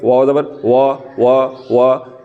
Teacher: होंठों को गोल करके वाव ज़बर वा, तो ये होंठ गोल हो रहे हैं। तो इन हरफों को अदा करते हुए होंठ हरकत करते हैं।